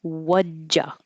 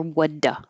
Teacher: I don't really need the D because when I say wudja, before I make the J, my tongue is completely pressed against the top of my mouth, blocking the airflow